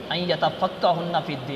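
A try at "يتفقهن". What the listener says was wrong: ان یتفقہنا، ہنہ نہیں یتفقہنا، جمع مؤنث غیب کا صیغہ ہے، یتفقہنا، کہ وہ سمجھ حاصل کرتی ہیں دین میں۔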